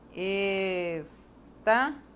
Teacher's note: A sílaba tônica é o tá. Estava. Ela também é a segunda, contando do final para trás, né?